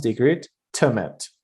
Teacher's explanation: They agreed to meet becomes they agreed to meet, not to. So very short and weak sound, to becomes t.